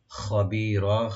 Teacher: বিমা, বি বলবেন, মা একালে টানবেন ওপেন করে, বিমা তা'মালুনা, তা'মালুনা, তা আইন, তাটাকে ওপেন করে আইনটাকে রাইট দিবেন, তা'মালুনা, মা ওপেন রাখবেন, লু একালে টানবেন, নুনে কোনো টান নাই লাস্টে, তা'মালুনা খাবীরা, খাবীরা, খাটাকে রাইট দিবেন গলার শুরু থেকে।